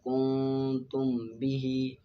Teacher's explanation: ادغام شفوی میم ساکن کے بعد دوسری میم آ جائے تو میم ساکن میں ادغام شفوی مال غنہ ہوگا، جس طرح کہ فہم مقمحون۔ اخفا شفوی میم ساکن کے بعد حرف با آ جائے تو میم ساکن میں اخفا شفوی ہوگا